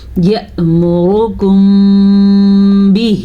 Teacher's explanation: پھر سے اخفاء شفوی کا قاعدہ اور ہے، دیکھیں میم ساکن کے بعد با آیا ہے، ہم نے ہونٹ بند کر کے غنہ کیا. یأمرکم بہ، مد ادا کریں گے اور ہا کا مخرج سینے سے نکالیں گے.